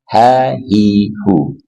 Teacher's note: Ha dari pangkal tenggorokan.